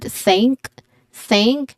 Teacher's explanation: There's a voiceless th sound at the first word.